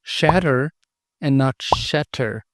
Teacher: in linguistics this feature is known as a tap or a flap